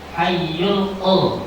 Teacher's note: Lam sukun dibaca jelas dinamakan idhar qamari. Sebab alari bertemu dengan qf.